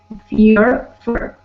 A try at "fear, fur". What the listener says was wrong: Better. Good, good.